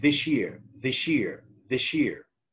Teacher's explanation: sa plus ya affect each other and becomes a third sound, which is the sha. So sounds affect each other when they are coming in neighboring positions, they affect each other. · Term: assimilation